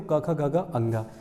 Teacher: यानी क वर्ग हमारा कहाँ से स्पर्श कर रहा है, तो ये कंठ से स्पर्श कर रहा है।